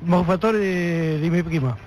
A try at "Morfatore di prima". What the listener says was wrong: No, de mi prima no. Dice, Morfatore di prima.